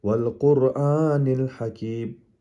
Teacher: قاف موٹے حروف میں سے ہے، را بھی موٹے حروف میں سے ہے، اس کو کہتے ہیں تفخیم، موٹا کر کے پڑھیں گے۔